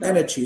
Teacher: i stretch the ah a bit because it's the strongest syllable it's a strongest one here so you pronounce it energy yes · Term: primary stress